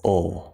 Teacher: We're not going to worry too much about that right now. The half L, you don't touch the top. It's more like you pull your tongue back inside the mouth.